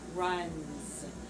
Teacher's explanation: you have an unvoiced next to another unvoiced sound over here because n is voiced you already have your voice box on and that's going to cause this s to be voice